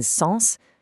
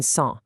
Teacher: The resonance literally has to vibrate in your nose rather than just your mouth. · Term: nasal resonance